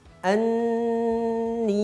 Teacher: nun yang bertasydid. Maka kita contohkan dan kita sebutkan bersama. Anni, seperti itu. Dibaca dengungnya yang lama.